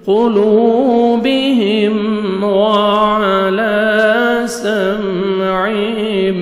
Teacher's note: لام کو 1 سیکنڈ کھینچیں گے، میم ساکن کا اظہار جلدی پڑھیں گے